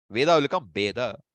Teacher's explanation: It's not a universal thing, okay? In certain regions, you will find Va and Ba are pronounced almost alike. But it is not accepted universally.